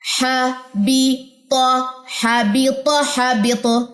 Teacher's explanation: تو پہ کلکلا ہوگا کیونکہ تو کے اوپر زبر گر جائے گی تو یہ کلکلا لے گی